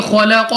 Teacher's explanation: कौफ फिर हमारे पास मुस्तालिया में से है तो मोटा पढ़ेंगे मुंह और आवाज को खोलकर